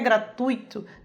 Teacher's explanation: É um ditongo aí, e é o encontro da vogal U com a semivogal I